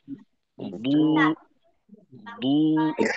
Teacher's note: দদের মাখরাজ সম্পর্কে আমরা জানি যে জিহ্বার গোড়ার কিনারা, তো সেক্ষেত্রে যেন দালের মতো না হয়